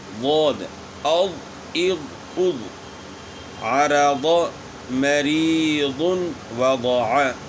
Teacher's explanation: زبان کی کروٹ اوپر کے داڑوں کی جڑ کے ساتھ لگے گی، اور اس کے بعد زبان تالو کی طرف اٹھے گی، تو یہ حرف موٹا ہوگا۔